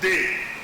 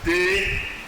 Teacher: you have the contrast between the low tone and the rising tone